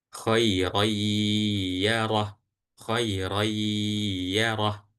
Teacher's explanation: Karena ada tanwin yang ada di huruf ro bertemu dengan huruf ya. Maka dari ro ini langsung masuk ke huruf ya dan ya-nya didengungkan. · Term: idgham bi gunnah